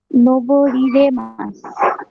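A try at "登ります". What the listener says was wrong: রি রে কেন হবে? রি উঠে রে হবে না?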